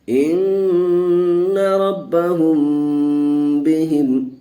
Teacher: جب میم ساکن کے بعد با آ جائے تو پھر گنہ کر کے پڑھیں گے، اخفاء ہوگا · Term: اخفاء شفوی